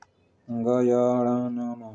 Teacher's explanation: उच्चारण स्थान नासिका से होता है, इसीलिए इन्हें नासिक के व्यंजन कहते हैं